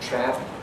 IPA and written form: træp (TRAP)